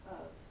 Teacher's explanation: So we'll just make it two sounds in this word. And this F sound isn't even a sound, it's kind of a V sound, but this is the word of.